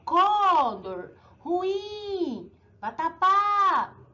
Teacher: Vocês perceberam que a última sílaba é a mais forte, então eu digo que ela é uma oxítona, certo?